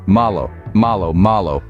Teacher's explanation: the L in Spanish is softer than in English it's not as hard or forceful think of it as a light touch on the roof of your mouth with the tip of your tongue · O at the end is similar to the O in pot it's a short crisp sound not elongated like the English O